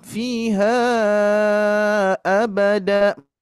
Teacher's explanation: kalau misalkan fiha dan abadan digabungkan maka menjadilah 4 sampai 5 harakat